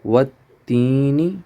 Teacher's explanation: نی کو لمبا نہیں کریں گے کیونکہ صرف زیر ہے تو زیر کو ہم لمبا نہیں کرتے.